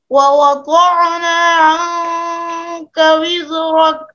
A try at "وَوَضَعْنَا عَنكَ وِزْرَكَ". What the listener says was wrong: یہاں پر غلطی ہو رہی ہے. ووضع عین ساکن ہے، اس کو ساکن پڑھے، اس پر قلقلہ نہیں ہوتا. ووضعنا عنك وزرك یہ بھی ایک قاعدہ ہے کہ جب حرف مدہ کے بعد اگر وہ الف ہو، اگر واو ہو، اگر یا ہو، حرف مدہ کے بعد حرف حلقی آ جائے تو اس میں بہت احتیاط کے ساتھ ان دونوں میں تمیز کرنی ہے.